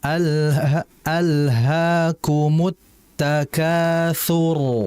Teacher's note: Rnya kan berarti di situ mati. Sebelumnya ada huruf tsa harakatnya dammah maka rnya jadi tebal. Jadi harus dibaca tebal juga. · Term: ro-nya jadi tebal